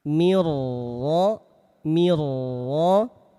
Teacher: Maka nun sukunnya lebur ke huruf ro. Lihat posisinya dalam keadaan tafkhim. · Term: idgham bila gunah